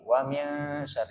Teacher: Ketika membaca wamin itu nunnya enggak jelas, bukan wamin. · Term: ikhfa hakiki